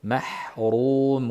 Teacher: Oxiridagi mun ham demak mim g'unnali, nun ham g'unnali, orasidagi vav maddiya g'unnasiz.